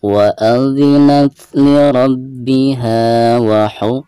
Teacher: jadi ketika membaca huruf hams tersebut ada nafas yang mengalir keluar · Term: hamasiah